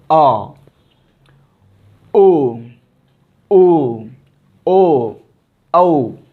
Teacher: जीभ के पीछे वाले हिस्से पे मतलब प्रेशर पड़ता है